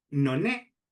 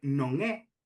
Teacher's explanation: a pronuncia galega normal, con nasal velar ao final de palabra, non é, pois a xente, por influencia do castellano, está pronunciando noné.